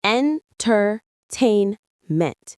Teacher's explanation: The stress is on the third syllable tain.